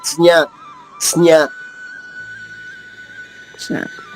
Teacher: దంతవ్యం కాకూడదు, అందుకని నా అనకూడదు. అంటే నాలుక టిప్ టచ్ అవ్వకుండా జ్ఞా పలకాలి. నాలుక మధ్య భాగంతో జ్ఞా పలకాలి. జ్ఞా జ్ఞా అంతే అంతే.